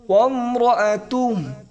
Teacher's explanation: লাস্টে কিন্তু বড় হা এখানে একটা গরম বাতাস বের হবে